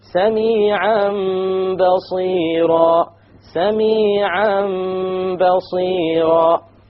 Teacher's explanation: We change the Tanween into a Meme, and that is called iqlab.